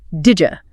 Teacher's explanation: The compromise is a J sound, the affricate, so your tongue slides across the roof of your mouth, creating didja.